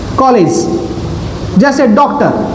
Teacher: इसका उच्चारण आ और ओ दोनों के बीच का है। ना तो इसको आप आ बोल सकते हैं ना तो आप इसको ओ ओ बोल सकते हो। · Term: आगत ध्वनियां